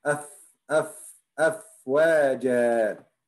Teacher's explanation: Your tongue inside. And just your teeth on the top of your bottom lips and your lip inside from inside.